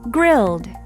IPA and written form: grɪld (Grilled)